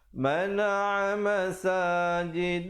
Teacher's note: Lafz jalalah sekali lagi kita jumpa datang sebelumnya baris fathah atas, baca tebal 2 harakat.